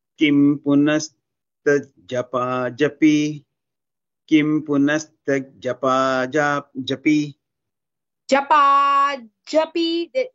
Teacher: No elongation for ja. It's not dirghakshara, it is a hasvakshara.